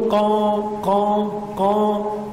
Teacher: وكذلك هنا في أندونيسيا يقولون قا قا قا، ينطقونها من الخيشوم، وهذا خطأ